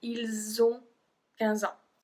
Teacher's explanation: we do not pronounce the S at the end of il, but because on start with a voyelle, we make the connection, we make the link